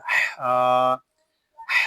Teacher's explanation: ہا الف زبر ہا، ہا کو ہم ایک الف تک کھینچ کر پڑھیں گے کیونکہ یہاں الف مدہ ہو رہا ہے۔ ہا جو ہے اس کو حلق کے درمیان والے حصے سے ادا کریں گے۔